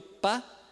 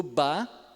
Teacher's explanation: O pá é surdo porque as cordas vocais não vibram, e o bá é sonoro porque as cordas vocais vibram. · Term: surdo e sonoro